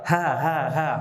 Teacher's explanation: Kalau hamas, pita suaranya tidak bergetar, ya. Kemudian udara keluar.